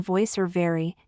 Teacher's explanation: is made by placing your top teeth gently on your bottom lip and adding a small vibration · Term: V sound